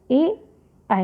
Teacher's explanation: कंठ और तालु को स्पर्श करने वाला वर्ण ए आय है। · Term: कंठ तालु